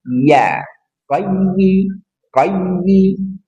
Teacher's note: ya tengah lidah ditekan ke langit-langit di atasnya